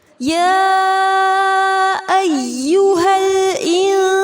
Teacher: مد متصل ہے. اسے 4 یا 5 حرکات جتنا لمبا کیا جائے گا